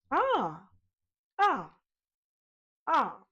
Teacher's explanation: A glossal attack is when the vocal folds come together firmly and the sound begins with a clean percussive onset. It's a very present sound almost like a tiny drum inside your throat. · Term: glottal attacks